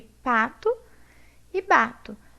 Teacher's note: eles compartilham a propriedade fonética de modo de articulação comum e eles são bilabiais eles compartilham a característica de ponto de articulação